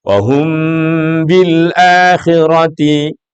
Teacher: Mim bertemu dengan ba, itu bacaannya disebut dengan ikhfa syafawi. Maka pasti mim ini akan menjadi keluar hurufnya di hidung.